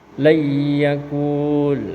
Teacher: Nun sukunnya dilebur ke huruf ya. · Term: idgham bighunah